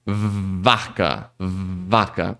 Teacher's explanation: Quando você segura o som no V, você já sente que dessa vez ele tá tremendo antes mesmo de você falar esse primeiro A aqui. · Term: som do V